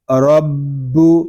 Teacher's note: آگے با مشدد ہے، اس کو ہم جماؤ کے ساتھ ادا کریں گے۔ با پیش بو، رب، کاف زبر کا، رب کا، فا زبر فا، تا رو زبر تار، فاتار، را پور پڑھیں گے اور تا کو ہم باریک پڑھیں گے، فاتار۔